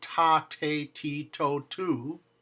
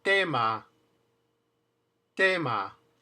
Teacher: The T in Spanish is also made right behind that ridge, just like in English, ta, except, guess what? No puff of air. In English, we say ta, te, ti, to, tu, not in Spanish.